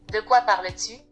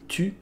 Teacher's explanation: a vowel breaking in ‘tu’